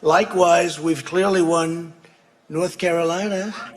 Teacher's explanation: a rising intonation we associate with questions, and he's not making a question here, he's making a statement. His voice isn't showing that drop in intonation, so his voice suggests he's not quite as certain as the words seem to want to portray.